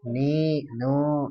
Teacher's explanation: Lidahnya ketemukan dengan langit-langit mulut kita. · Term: huruf nun